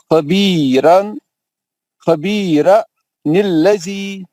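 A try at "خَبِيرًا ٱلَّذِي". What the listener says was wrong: بھائی وہاں پہ تنوین میں سے ایک زبر گرا دے کے آپ خبیرا.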